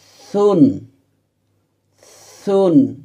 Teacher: জিহ্বার আগা সামনের উপরের দুই দাঁতের আগার সাথে লাগিয়ে নরম করে উচ্চারণ করতে হবে